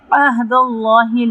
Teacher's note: عہد اللہ لام جلالہ موٹا پڑھیں گے